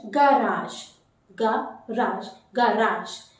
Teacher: you have to stretch that first syllable little bit, but not more. Not ga. It is g.